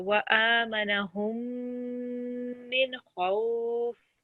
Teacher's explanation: if we have a meme sakin followed by a meme mushaddid, we need to hold this for 2 seconds.